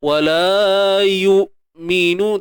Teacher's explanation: Wala yu. Matikan hamzah ni dengan mengekalkan sifat syiddahnya sebaik mungkin